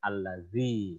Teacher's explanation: fasohahnya huruf zal ada anginnya sedikit